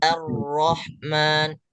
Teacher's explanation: huruf alif itu keluarnya tipis dan ro-nya sesuai tebal